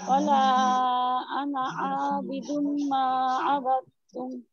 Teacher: এখানে আইন আরেকটু প্রেসার দিতে হবে, আর মিমের মধ্যে গুন্নাটা আরেকটু বেশি করতে হবে